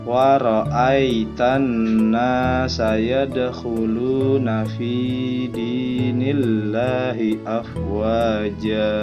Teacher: ada huruf kha yang keluarnya dari pangkal tenggorokan